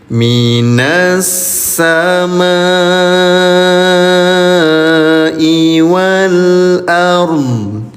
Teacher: Cara bacanya bunyi mim dipanjangkan selama lima ketukan atau lima harakat ya. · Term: mad wajib muttasil